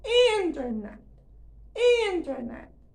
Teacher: há uma forte exploração da sílaba tônica e uma evidente diminuição do volume, não há gás em final de palavra, o que é bem natural, até fisiológico, certo?